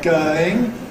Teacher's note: So [ ˈgəʊɪŋ ] loses the [ ʊ ] element, [ ˈgəɪŋ ]